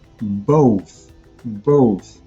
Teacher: try adding the th, as I mentioned, both, both, and changing the vowel sound to more of an o.